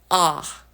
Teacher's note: Ah is androgynous, and it is in a neutral place. This is the most neutral vowel that there is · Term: ah kind of vowel